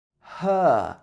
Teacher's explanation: You don't pronounce the R at the end of the word.